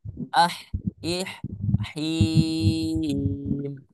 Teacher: jangan sampai ketika kita mengucapkan him yang awalnya itu adalah huruf H tipis, kemudian karena kita saking semangatnya berubahlah dia menjadi huruf H tebal